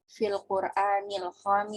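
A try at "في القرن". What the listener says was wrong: Fil qarni ya, bukan Quran. Khamisa ya. Ini mabni ya. Khamisa asyara.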